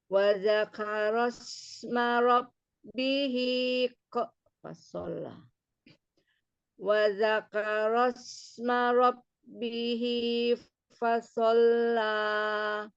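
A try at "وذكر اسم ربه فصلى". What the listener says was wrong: Wa dzakaros ro wa dzakaros ma rabbihi ro. Ro-nya itu takrirnya itu jangan wa dzakaros ro jangan. Ro.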